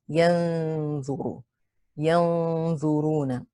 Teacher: You hide the nun into the dha. Retain the gunna. · The gunna should also be heavy because dha is a heavy letter. Dha has a dhamma. It is heavy on the 3rd scale. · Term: ikhfa haqiqi